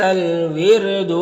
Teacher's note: یہاں پر را ساکن سے پہلے واو کے نیچے زیر ہے تو را کو باریک پڑھیں گے